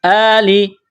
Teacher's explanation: یہ کڑا زبر ہے، ایک الف کے برابر کھینچنا ہے ، حمزہ کڑا زبر لام ذیلی، آلی، من آلی فرعون، فا